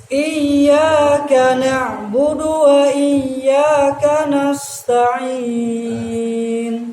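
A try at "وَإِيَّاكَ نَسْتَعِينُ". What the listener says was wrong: Kurang istifal. Kurang ke bawah. Tidak nas, tapi nas.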